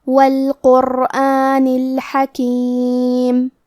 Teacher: کلمت القرآن میں حرف القاف کی ادائیگی زبان کے جڑ اور تالو کے نرم حصے سے ہے